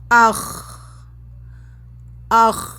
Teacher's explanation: آواز جب مخرج سے نکلی ہے تو ہمیں ایسا محسوس ہو رہا ہے کہ آواز اوپر تالو کی طرف جا رہی ہے · خا کا مخرج ادنیٰ حلق ہے، حلق کا سٹارٹنگ حصہ وہ خا کا مخرج، جب وہاں سے آواز نکلے گی تو تالو کی طرف جاتے ہوئے محسوس ہوگی۔